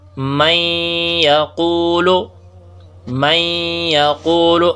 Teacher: تو نون ساکن کے بعد جو ہے وہ یا آ گئی ہے جو حروف یرملون میں سے ہے تو نون ساکن یا سے بدل گیا ہے۔